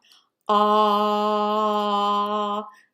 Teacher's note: My lips are flat, my tongue is down in the back, so you can see all the way to my throat. Remember, I'm going to have to keep my voice box turned on because this is a vowel sound and all of our vowel sounds are voiced. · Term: ah sound